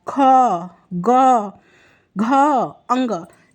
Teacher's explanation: ये कंठ है फ्रेंड, इनका उच्चारण स्थान कंठ है क वर्ग का।